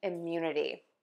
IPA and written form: ɪmˈjunəti (IMMUNITY)